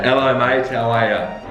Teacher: we drop the H sound, a really strong H sound